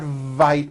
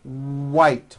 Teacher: It's not vite with a V, it's white with a W.